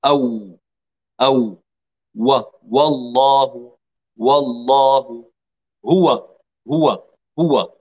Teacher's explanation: مخرج الواو غير المادية أو بانضمام الشفتين إلى الأمام مع ارتفاع أقصى اللسان